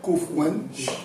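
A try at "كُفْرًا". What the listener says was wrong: kufran. Not one, run.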